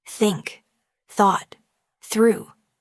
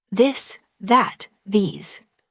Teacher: For example, the te sound in words like think or this. For think, gently place your tongue between your teeth and push air out. For this, your tongue touches the same position, but you engage your vocal cords to produce a voiced sound.